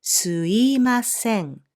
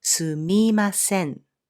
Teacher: the consonant M in this み is often dropped for easier pronunciation